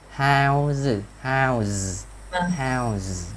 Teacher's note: Nguyên âm, nhớ lại bài hôm trước, toàn bộ nguyên âm nó là hữu thanh. Thế nên nó đang là hữu thanh thì chúng ta phải cái đuôi s tiếp tục nó là hữu thanh thành z.